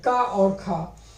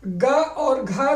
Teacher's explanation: अघोष है, का और खा। इसी तरह ग और घा जो है ये सघोष है